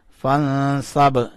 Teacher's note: فا نون زبر فن صاد با زبر صب فن صب. نون کے اوپر اخفا کیا. نون کو چھپایا اور اس با کے اوپر کلکلا کیا. با کو اٹھایا.